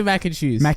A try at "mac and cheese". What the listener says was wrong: You say mackin. Mackin. Akin. You're still saying it. Mackin. Mackin.